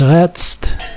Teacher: So lebt is pronounced as lept, so the b sound becomes p. Redst is redst, so that instead of a d, it's t.